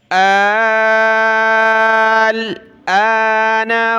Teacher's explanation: اس حمزہ پر صرف کھڑا زبر ہے تو ایک الف کی مقدار اس کو کھینچنے اوپر